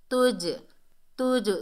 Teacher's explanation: جب یہ ساکن حالت میں ہوتے ہیں تو ان میں ڈبل ساؤنڈ پیدا ہوتی ہے، قلقلہ پیدا ہوتا ہے